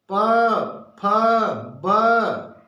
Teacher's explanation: दोनों ओठों का प्रयोग हो रहा है इसमें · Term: ओष्ठ